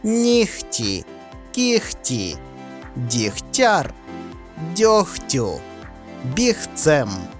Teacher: г в середині обмеженої групи слів оглушується перед наступним глухим приголосним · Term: уподібнення за глухістю